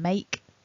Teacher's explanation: in the basic form make, we end the word with that k sound, so there's no voicing